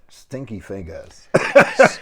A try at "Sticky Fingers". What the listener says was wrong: sticky, not stinky. That's totally different things. Stinky, sticky, totally different.